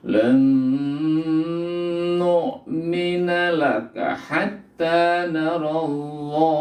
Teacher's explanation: Lan idgham itu memasukkan bi-nya dengan guna dengung, memasukkan nun mati ke dalam nun, huruf idgham bi gunnah dibaca dengan dengung. Dengung artinya itu suara mendengung dari hidung ya.